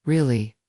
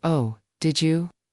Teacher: using a rising tone to show you're interested